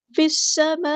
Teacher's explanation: ساتھ ملا دیں گے، حمزۃ الوصل ہمارا ڈراپ ہو جائے گا، لام جو ہے یہاں پہ لام شمس ہے، اس کو ہم ظاہر نہیں کریں گے ، سین کی سیٹی ہم واضح کریں گے، فی السماء، یہاں · ہمارے پاس کنیکٹڈ مد ہے، اس کو 4 یا 5 کاؤنٹ لمبا کرنا ہے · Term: مد متصل